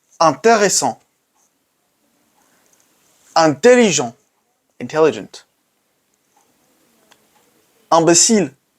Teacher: So we got the sound un, produced in the back of the mouth, un, with a wide open mouth, basically, un. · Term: third nasal sound